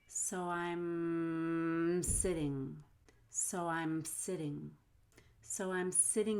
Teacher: between i'm and sitting you want to hold the m until you get to the s